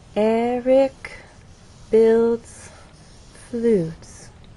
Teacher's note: there is still a change of pitch because there is word stress, but the overall pattern is falling intonation · Eric stresses on the first syllable, builds as one syllable, and flutes receives our main stress.